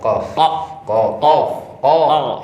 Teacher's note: dimulai dari pangkal lidah paling belakang ada huruf Kof.